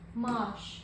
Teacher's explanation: A-nın biri düşüb, biri uzun tələffüz olunur.